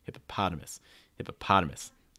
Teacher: the ah sound needs to be the strongest syllable. Make sure that's really strong.